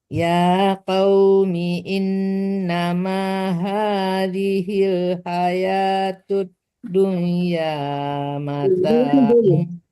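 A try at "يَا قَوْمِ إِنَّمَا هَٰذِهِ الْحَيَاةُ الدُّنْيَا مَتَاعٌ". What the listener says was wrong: Jangan dunya tapi dunya, jangan disamarkan ke ya, karena itu izhar mutlaq namanya ya, harus jelas dunya.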